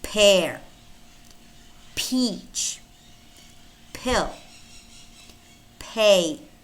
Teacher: remember it's a voiceless bilabial stop